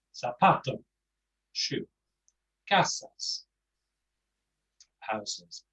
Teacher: So if a word has no accent and it ends with an N, an S, or any vowel, then the stress comes on the penultimate syllable